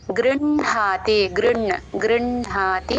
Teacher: కింద ఇందాక మా వత్తు చెప్పుకున్నట్టే ఇప్పుడు అణ వత్తు కూడా అణ వచ్చినప్పుడు అణ ముందు చెప్పి హ తర్వాత వినపడేలాగా చెప్తాం